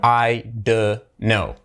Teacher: So the don't becomes a duh.